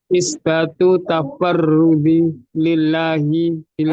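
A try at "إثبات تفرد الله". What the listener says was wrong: enggak. Ini ada alifnya. Kalau ada alifnya berarti bukan lillah, tapi tafarrudillahi langsung. Ulangi.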